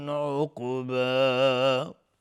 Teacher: عقبا قاف قلقله میخواد و از حروف استعلا است